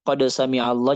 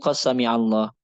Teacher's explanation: beberapa suku akan mengasimilasi 'qad sami'allahu' menjadi 'qa sami'allahu ' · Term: idgham